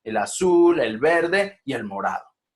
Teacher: cuando ya van a nombrar el último hacer un tono descendente